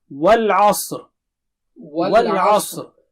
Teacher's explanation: والعصر, وا should be clear, وا جو ہے منہ گول کر کے کھولیے اور عین صاف پڑھیے, اور صاد بہت موٹا اور اونچا ہے, اور را جب آپ رکیں گے تو موٹا رہے گا